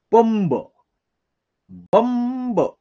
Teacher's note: बम नाही ब आणि म असा उच्चार होतोय